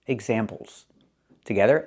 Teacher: We need that Z sound because it's more than one example.